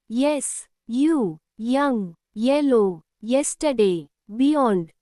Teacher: when వాయే appears at the beginning of a word, it gives the sound I, the palatal glide J sound